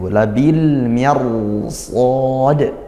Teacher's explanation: ke-10 ah Namun karena ini setelah huruf rnya itu Huruf tebal Maka langsung dibaca tebal sejak ro seperti itu labil mirsod bukan labil mirs tidak sejak ro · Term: tafkhim